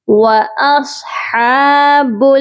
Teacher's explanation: صاد کو موٹا کر کے پڑھیں گے، اور ہا کے اوپر کھڑی زبر ہے اس کو بھی ایک الف کے برابر لمبا کریں گے۔